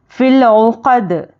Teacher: دال پر جزم دے کر سانس توڑیں گے تو دال میں خلخلہ ہوگا